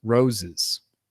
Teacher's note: definitely center, reduced, quick vowels. And it's still an unstressed vowel